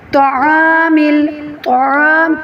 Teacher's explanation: طا کو موٹا اور عین کو حلق سے ادا کرتے ہوئے ادا کریں گے۔